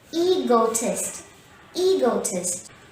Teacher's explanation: himself the word egotist has three syllables here e go test and the stress is on the first syllable e so say egotist repeat after me egotist egotist to conclude · E-go-tist. And the stress is on the first syllable E.